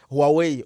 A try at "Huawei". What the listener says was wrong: Yeah, it's Huawei. There's no who.